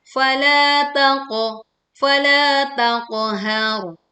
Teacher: Bunyikan huruf sukun qaf dengan pantulan yang jelas dan tebal , jangan dimiringkan. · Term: qaf sukun